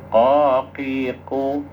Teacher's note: Jadi makhrajnya qof itu hampir saudara sepupu ya hampir sama itu dengan kaf cuman qof itu lebih tebal dikit kalau makhrajnya tempat keluarnya itu lebih ke dalam